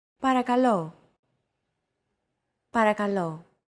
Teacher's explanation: to English don't forget that words get accentuated in Greek so make sure to stress that final syllable with the accent mark